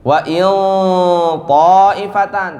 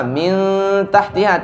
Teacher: Wa in ta'ifatan tebal. Beda sama min tahtiha tipis.